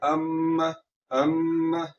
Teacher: یہاں پر ہم نے میم مشدد کو غننے کے ساتھ پڑھنا ہے، آواز کو ناک میں لے جا کر تھوڑا سا لمبا کرنا ہے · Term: غنہ